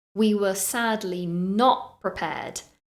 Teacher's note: in this sentence I stress the word not we were sadly not prepared so I'm giving it lots of